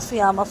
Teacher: صاد پر سیٹی واضح